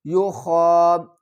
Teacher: یخادعون اللہ والذین آمنوا، یا پیش یو خا کھڑا زبر خا، یو خا کو ہم حلق کے اوپر والے حصے سے ادا کریں گے اور اوپر کھڑا زبر ہے تو اس کو ایک الف کی مقدار کھینچ کر بھی پڑھیں گے